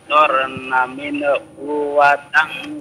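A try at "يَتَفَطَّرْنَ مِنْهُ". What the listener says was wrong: Min hu jangan dipanjangin ya. Jangan min hu, itu bukan huruf nun, bukan huruf qalqalah ya. Jadi Bapak harus baca min hu. Jangan Qalahkan.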